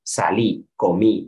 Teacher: O, por ejemplo, que cuando tenemos verbos como el pretérito indefinido, pretérito perfecto simple, como queramos llamarlo, los verbos regulares tienen un patrón acentual que es salí, comí, es decir, son agudas